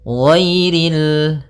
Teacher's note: ghainnya tebal. Ghairil, tapi tidak terlalu tebal sampai kepada huruf shad dan huruf dhad